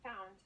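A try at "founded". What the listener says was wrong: the ed was very very um silent so we just need to make sure that you pronounce it entirely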